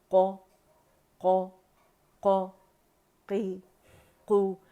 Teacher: قو قو قو قی قو، مخرج سے ادا کریں گے لیکن جھٹکا نہیں دے، قو قو کر کے نہیں پڑھیں گے، اسے جھٹکا نہیں دینا ہم نے، حمزہ نہیں لگانا ہے اس کے ساتھ